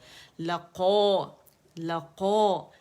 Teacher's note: قو جو ہے اس میں پہلے درجے کی تفخیم آ گئی، موٹائی آ گئی، تو لقو، لقو موٹا پڑھیں گے.